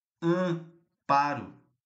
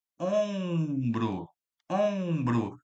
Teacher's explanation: A função do m aqui é somente nasalizar. nazalizar o a, a letra A. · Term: dígrafo vocálico